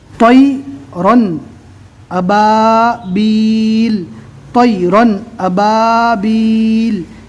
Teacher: یہاں پر یائلین ہوگا، نرم آواز سے جلدی پڑھیں گے